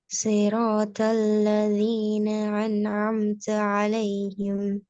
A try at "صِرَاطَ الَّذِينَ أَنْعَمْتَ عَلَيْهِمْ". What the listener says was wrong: இதுல எங்க அலிஃப் இருக்குது? ஏட உச்சரிப்பு வரவே இல்லையே. என்ற அந்த சவுண்ட் வரலன்னா அலிஃப் வராது.